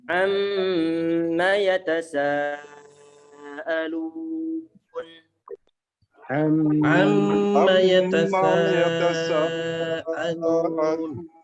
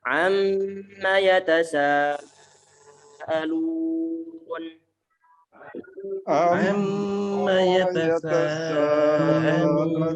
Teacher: Mimnya jangan sampai lupa untuk ditahan karena dia adalah bacaan gunnah yang paling sempurna, paling lama penahan suara gunnahnya.